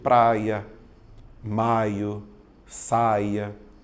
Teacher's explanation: Vou notar que eu tenho apenas um ditongo decrescente oral